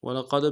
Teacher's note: قوف کو موٹا کریں گے، دال کے ساتھ ملانا ہے، دال حرف قلقلہ میں سے قلقلہ کریں گے